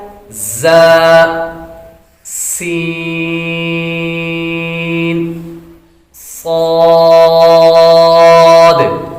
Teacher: 3 حروف ایسے ہیں جن کو ادا کرتے وقت سیٹی کی طرح آواز نکلتی ہے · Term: حروف صفیریہ